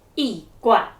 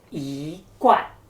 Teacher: when E encounters the fourth tone, we need to change it to the second tone, making it sound softer and smoother.